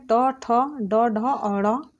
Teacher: ट वर्ण का जो उच्चारण स्थान होता है मूर्धा होता है। मूर्धा उच्चारण जो होता है मूर्धा उच्चारण जो इसका स्थान होता है इसमें आते हैं ट, ठ, ड, ढ और ड़ और ढ, ड और खटकोण स ये वर्ण आते हैं।